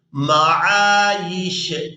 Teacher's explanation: अब यहाँ पर वक़फ़ करेंगे तो वक़फ़ की सूरत में शीन को साकिन कर दिया जाएगा, या को शीन साकिन के साथ मिलाएंगे, या शीन ज़ेर यिश मआयिश।